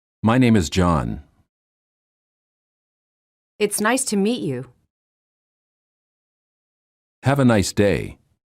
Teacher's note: Falling intonation lower your voice at the end of the sentence falling intonation is used in statements